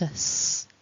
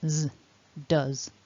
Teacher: it actually ends with a z with a voiced sound so it's not us it's voiced is z does so that's